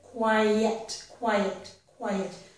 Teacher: The first syllable ends in the I vowel sound, which of course has a little bit of a y. I'm circling the y, but it's a y sound.